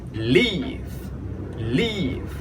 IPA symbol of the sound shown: i: